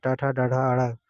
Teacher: ट ठ ड ढ ण मूर्धा होता है।